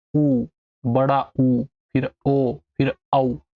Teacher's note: जब भी आप इन चारों को पढ़ोगे ना तो आपका जो होठ है होठ गोल होने लगेंगे · जब आप इन चारों को याद रखो सिर्फ कि वृत्तमुखी में कौन से चार है। उच्चारण में होंठ गोलाकार होते हैं, जैसे बोलो ऊ, बड़ा ऊ, फिर ओ, फिर औ। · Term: वृत मुखी